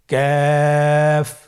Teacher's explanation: কাফ উচ্চারণের ক্ষেত্রে অবশ্যই পাতলা করে উচ্চারণ করতে হবে এবং তিন আলিফ টেনে পড়তে হবে।